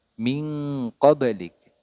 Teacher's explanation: nun sukun bertemu dengan qof nah ini yang hanya berbunyi Eng